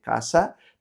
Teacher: Quita la última s. La de antes se tiene que abrir